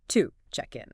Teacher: to isn't pronounced with its full, strong oo vowel sound, like if you said the word to. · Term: schwa sound